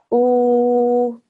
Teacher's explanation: And what that does is it makes the sound of this letter, the alif with the dhamma, change from just an ordinary oo, stretches it out for 2 seconds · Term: waw madda